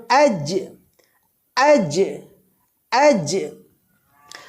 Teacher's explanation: জিম বর্ণটি উচ্চারণের সময় জিহ্বার মাঝখান আর উপরের তালুর মাঝে একেবারে লেগে যাবে